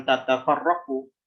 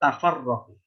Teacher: singkatnya taknya itu diidgham, dimudahkan untuk di pengucapan. Jadi bukan tatafarraqu, tafarraqu.